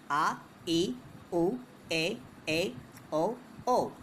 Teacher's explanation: इन स्वरों के उच्चारण में ह्रस्व स्वर से दुगना यानी 2 मात्राओं के बराबर का समय लगता है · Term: दीर्घ स्वर